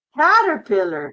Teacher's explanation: For the C, for this sound, you don't use your voice. You just say, no voice.